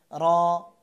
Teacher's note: র উচ্চারণ করবেন জিহ্বার আগা ও তারপরে পুরো তালুর সাথে লাগাতে হবে, অর্থাৎ এই যে দাঁত, এই দাঁত সংলগ্ন এই তালুর সাথে।